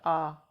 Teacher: तो विवृत में तो आ आता है, आ बोल के देखो तो इसमें हमारा मुंह पूरा खुल जाता है,